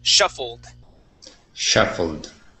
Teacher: ends with an l sound we go right to a d